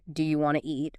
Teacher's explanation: Sometimes sounds are dropped entirely like the T often disappears in want to